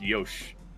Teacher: And then the I comes out, the I sound comes out naturally from making the SH